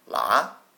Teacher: The second tone is the rising tone. Sounds a little bit like a question.